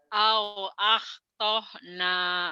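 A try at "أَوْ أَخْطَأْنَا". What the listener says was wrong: Bukan au ahtahna. Ini kan hamzah mati. Au tok. Neken dikit. akhtana. Nanya panjang.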